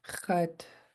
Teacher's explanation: this underline X in khat is pronounced in the back of your throat.